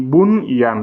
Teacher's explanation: le nun sakin, il est suivi par la lettre ya et pourtant il n'y a pas assimilation parce que ça fait partie des 4 exceptions. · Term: clarification